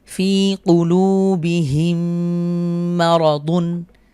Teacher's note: মিম সাকিনের পরে মিম এসেছে, তাহলে পরবর্তী মিমে আমরা তাসদিদ দিয়ে মিলিয়ে গুণনা করব